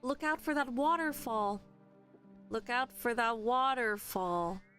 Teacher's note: I feel like wa at the front is the most natural or the closest. So that would be the primary stress. Waterfall. But essentially, all three vowels actually have a stress in each of them.